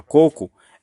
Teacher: A palavra coco é uma palavra paroxítona, porque qual é a sílaba tônica? É o primeiro co. Certo? Então, por isso que a palavra coco não é acentuada, não recebe acento.